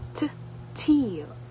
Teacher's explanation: It is an alveolar stop or plosive because the tongue makes complete contact with the alveolar ridge and briefly stops the air flow. · alveolar lateral approximant because the tongue contacts the alveolar ridge while air flows around the sides of the tongue